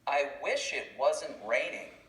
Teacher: when we're saying these words together you won't hear the t sound the t sound disappears